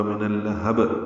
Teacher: ہاں کو با سے ملا دیں گے، وقفاً با پہ قلقلہ ہوگا